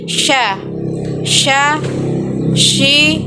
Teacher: bahkan ketika melafalkannya menyebar nafas dan udaranya yang disebut dengan tafasyi